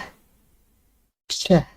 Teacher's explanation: the plosive t and the fricative sh, and together they form ch, ch. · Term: affricates